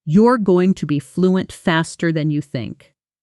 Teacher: Notice how the pitch doesn't rise sharply anywhere. It stays warm and falls gently at the very end. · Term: soft falling intonation